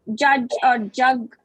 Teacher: your entire tongue touches the palate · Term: palatal